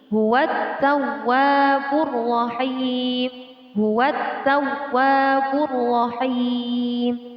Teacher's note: Alif lam syamsiyah. Cara membacanya dengan membuang lam sukun atau lam mati dan mentasydidkan huruf-huruf syamsiyah. Ta dan ro adalah termasuk huruf syamsiyah.